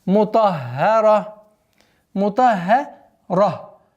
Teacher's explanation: После твердого звука идет ха. Удваиваем, мягкое произношение, а потом переходим на твердое произношение на ра.